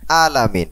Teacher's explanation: এই আইন উচ্চারণ অনেক সময় হামজা উচ্চারণ হয়ে যায়